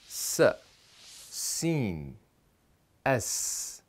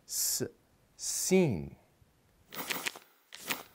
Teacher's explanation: Sin is pronounced from the tip of the tongue, touching the lower front teeth while the front teeth are connected, and then pushing air out.